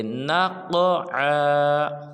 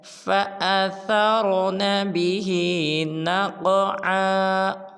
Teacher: قاف ساکن کے ساتھ ملائیں گے تو قلقلہ بھی کریں گے اور قاف کو پر ادا کریں گے